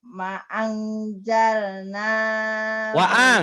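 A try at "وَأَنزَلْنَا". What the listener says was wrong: Waang bukan maang, waang.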